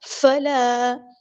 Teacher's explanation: فلا الف مد آیا ہے تو الف کے برابر ہم لمبا کریں گے، تکونن نہیں پڑھنا، تکونن.